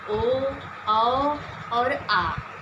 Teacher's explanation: जिस स्वर के उच्चारण में हम अपने जीभ के पिछले भाग का इस्तेमाल करते हैं, उसको पश्च स्वर कहते हैं।